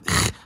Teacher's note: the voiceless uvular fricative [χ]